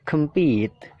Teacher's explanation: Yang ketiga, compete, jadi pitnya itu ditekan, kemnya itu kan dibaca pecel ya, kem ya, jadi singkat, kemnya singkat, compete, pitnya itu ditekankan